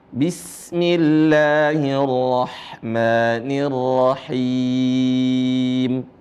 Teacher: Perhatikan suara H-nya dalam sekali.